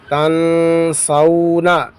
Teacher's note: نون زبر نا, تن سونا. یہاں پر اخفاء ہوگا, نون ساکن کے بعد حروف اخفاء میں سے سین آیا ہے